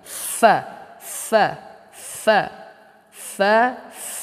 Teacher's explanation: pada perut bibir bawah dan ujung dua gigi seri yang atas jadi ujung gigi seri atas kita ini bertemu dengan bibir bawah bagian dalam kita